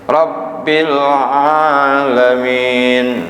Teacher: rab tuh tekan ke rabnya kan ada tasdid